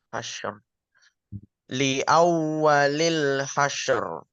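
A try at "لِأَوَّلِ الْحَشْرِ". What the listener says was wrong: Ini terlalu cepat. Li awwalil hasyr. Hasyr. Hasyr.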